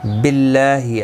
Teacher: اللہ کا لام باریک پڑھا جائے گا